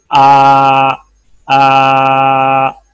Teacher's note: ये अलिफ निकला है जौफे हलक, क्योंकि ये हलक के पास से शुरू होता है ना